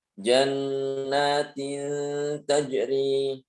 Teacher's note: nunnya disamarkan, tidak ditampakkan seperti pada bacaan izhar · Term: bacaan ikhfa